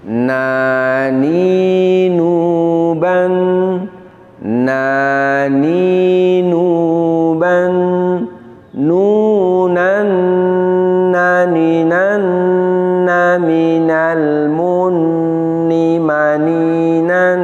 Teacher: Makhraj dari huruf nun adalah wan nunu yakhruju min tarafil lisan ma'a ma yuhadihi min lisatis saniyatainil ulyatain. Bahwa huruf nun ini keluarnya dari ujung lidah kita, lebih tepatnya ujung lidah kita menempel pada gusi 2 gigi seri atas. Jadi nun ini makhrajnya di ujung lidahnya menempel pada gusi 2 gigi seri atas.